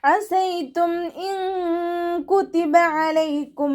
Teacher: ഐനിൻ്റെ സൗണ്ടിന് തൊണ്ടയുടെ മധ്യഭാഗത്ത് തന്നെ കൊണ്ടുവരിക. ഹംസയുടെ സൗണ്ടായി പോവാതെ നോക്കണേ.